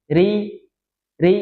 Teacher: Ri, dua kali getar, jangan sampai ri, tipis